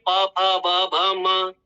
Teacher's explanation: अब ये आपकी स्थिति हो गई जीभ की। अब आपके दोनों होठ आपस में मिलेंगे और वर्णों का उच्चारण हो गया।